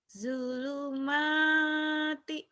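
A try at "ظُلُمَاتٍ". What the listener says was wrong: Zo ini bukan dulu ya, zo. Zu. Zulu zod zu ya.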